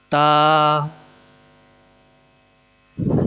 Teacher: تا بولتے وقت زبان کی نوک کو اوپر والے دانتوں کی جڑ سے ملا کر آواز نکالنی ہے